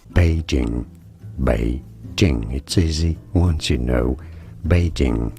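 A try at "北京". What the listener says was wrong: It's not Beijing, it's Beijing. Beijing, third, first. He doesn't know tones in Chinese at all.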